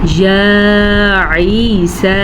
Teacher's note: یا کو ہم نے کم لمبا کیا ہے کیونکہ یا کے اوپر کھڑی زبر ہے، جبکہ یہ یا مدہ ہے، اسے بھی ہم نے کھینچ کے پڑھا ہے۔